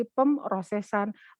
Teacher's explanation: mengapa di sini P-nya dibuang? Karena terlalu banyak bunyi-bunyi yang bilabial. Bilabial itu yang bibir atas ketemu bibir bawah.